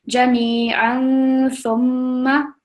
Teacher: a little bit more time on the tanween